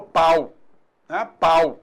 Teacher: eu tenho vogal A e semivogal U. Houve um declínio aí do som